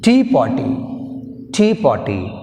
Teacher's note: In tea party we have a stress on first syllable.